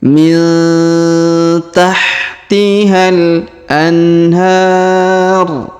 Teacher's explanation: huruf nun sukun bertemu Ta Maka di didengungkan dan disamarkan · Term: dengung dan samar